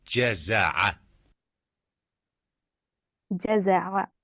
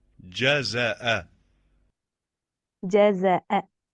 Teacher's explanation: Ain comes out from the middle part of the throat, and Hamza comes out from the bottom part of our throat.